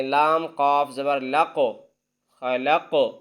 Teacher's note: اب قاف پر کلکلا کریں گے یعنی آواز کو ہلائیں گے